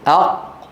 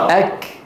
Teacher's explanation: القاف أق والكاف أك، واحدة من الحنك اللحمي والعظمي والثانية من الحنك العظمي فقط